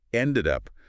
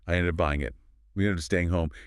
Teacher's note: by pushing the D directly into the U, your tongue does not have to stop moving. It saves breath and energy. · When Americans say these two words, they do not pause between them. They do not separate them at all. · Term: consonant to vowel linking